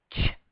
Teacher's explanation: If you release the tongue more slowly, you get ch, because the air is escaping as the tongue is moving down. If you don't add any voice, you get that lovely ch sound. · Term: affricate sound